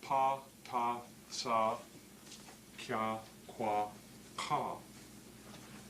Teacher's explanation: in producing them, you're not doing anything with your galameh. It's just open and the air can pass through it. So they are called voiceless